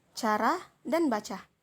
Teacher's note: termasuk dalam bunyi laminopalatal termasuk bunyi paduan dan tak bersuara tak bersuara artinya ketika melafalkan bunyi C ini kitaita suara tidak · Tak bersuara artinya ketika melafalkan bunyi C ini, pita suara tidak ikut bergetar, seperti kata cara dan baca.